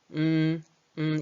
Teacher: 코 에 닿으면 코맹맹 이 소리 가 납니다 . 여기 서 N 발음 은 같습니다 . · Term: 비음